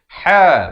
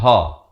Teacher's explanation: Bermula dengan ha, makhrajnya di tengahan kerongkong. Ha bukan ha.